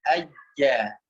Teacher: jim tempelkan ke langit-langit. Tengah lidah menempel pada langit-langit. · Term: huruf jim